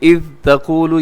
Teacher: یہاں ذال کو نرمی سے پڑھیے گا، اسے قلقلہ ہونے سے بچائیے گا۔ اذ تقول، اسے اذ ایسے کرنا، یعنی ہلا دینا، قلقلہ کر دینا، یہ درست نہیں ہے۔